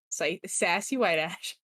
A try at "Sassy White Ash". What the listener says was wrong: sounds like you said you call someone sassy white ass.